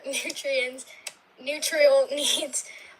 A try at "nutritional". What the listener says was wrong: You said nutrial needs. That's not a word. It's nutritional. Nutritional, can you say it?